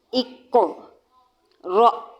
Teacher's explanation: اکو، اب دیکھیں اس کو کیسے پڑھنا ہے۔ قاف پر قلقلہ، ہونٹوں کو فلیٹ کریں اور پھر بولیں